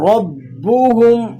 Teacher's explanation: رب را موٹا ہے اور با مشدد ہے تو آپ نے ذرا جماؤ کے ساتھ اس کو پڑھنا ہے